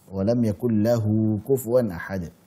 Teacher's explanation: Mad silah. Qasirah atau mad silah sughra. 2 harakat. Taib itu dengan syarat sebelumnya bukan sukun, setelahnya juga bukan sukun.